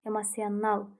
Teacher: vurğu dördüncü hecada yox, beşinci hecadadır. Sona düşür.